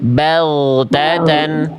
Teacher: Fokus di huruf gin suaranya jangan putus tapi mengalir. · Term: gin sukun, ghain sukun